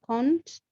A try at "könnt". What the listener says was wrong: auch mit Umlaut. Könnt, nicht konnt, but könnt.